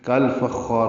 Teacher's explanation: فا کو خا سے ملائیں گے، خا پر پڑا جائے گا، حروف مستعلیہ میں سے ہے. خا الف مدہ ہے اور اس کا الف مدہ بھی پر ہوگا.